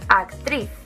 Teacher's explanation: Lleva el golpe de voz en la última, actriz. Por lo que, nuevamente, nos encontramos ante una palabra aguda.